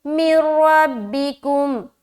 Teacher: नून साकिन के बाद रा है, यहाँ पर भी इदगाम कर रहे हैं, लेकिन ये इदगाम बगैर गुन्ने के होगा